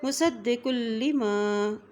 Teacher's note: قاف کی دو پیش کو لام کے ساتھ ملا رہے ہیں، لام کے اوپر شد ہے